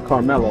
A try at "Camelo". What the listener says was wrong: Yeah, have a R. You say like, had a R, but don't have a R.